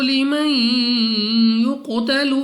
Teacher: नून साकिन के बाद या हरूफ यरमलून में से है, गुन्ना करके पढ़ेंगे।